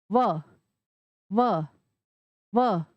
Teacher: व, व, व, मतलब जो हमारे ऊपर वाले दांत हैं वो नीचे वाले होठ को स्पर्श करते हैं तब व की ध्वनि आती है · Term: दंतोष्ठम